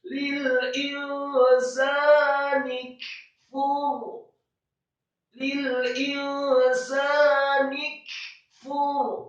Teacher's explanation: Kafnya dibaca sukun atau mati, kemudian fa-nya dimarfu'kan atau didomakan, cukup 1 harokat dan ro-nya disukunkan dan dibaca tebal karena sebelum huruf ro adalah huruf fa yang harokatnya marfu atau dhammah